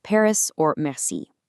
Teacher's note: Unlike the English R, which we produce way up at the front of the mouth, the French R comes from the back of the throat. Imagine it as a really soft, controlled gargle.